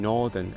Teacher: the more open 'or' sound in Northern